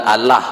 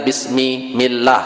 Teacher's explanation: Bismillah ada lafzul jalalah dibaca tarqik atau dibaca tipis